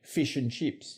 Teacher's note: Stressed I is much higher in the mouth than the cocknney and RP varieties.